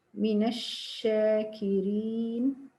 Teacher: Tafashi, what means diffusion, the spreading of air throughout the mouth during pronunciation of sheen